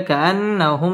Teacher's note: إلا عشية أو ضحاها كأن واجب গুন্নাহ করে পড়তে হবে كأنهم মিম সাকিনে ইজহারে খাস গুন্নাহ ছাড়া স্পষ্ট করে পড়তে হবে